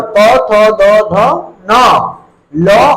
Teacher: और दंत स इसका जो उच्चारण स्थान है वह है दांत यह उच्चारण करते समय सारे के सारे वर्ण दांत को स्पर्श करते हुए बाहर निकलते हैं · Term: दंते वर्ण